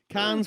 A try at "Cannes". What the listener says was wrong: Cannes. We don't pronounce the S, darling.